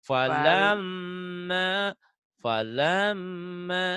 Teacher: Falamma mad tabi'i gunnah dan mad tabi'i ditahan dua-duanya ya.